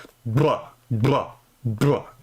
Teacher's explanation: So [snorts] a bilabial trill is basically a rolled b like a br that sound right there that would be a bilabial trill. I labialize it a little bit. So there's kind of like a w sound at the end of it.